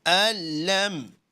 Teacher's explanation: Here we are merging noon and lam together. Rather than saying an-lam, we are saying al-lam. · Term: idgham